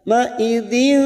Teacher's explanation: Kita samarkan bunyi kasrotain pada huruf dal. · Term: ikhfa hakiki